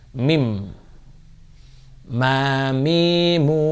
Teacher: mim berasal makhraj hurufnya dari bibir yang ditutup ya.